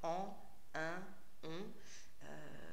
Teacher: On est les seuls en Europe à nasaliser comme ça une voyelle pour faire en, un, on. En Europe, dans aucune autre langue, on ne le fait. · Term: voyelles nasalisées